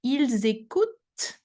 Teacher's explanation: the t is the last sound I should hear, because the e, the n, and the t actually doesn't really create any extra sound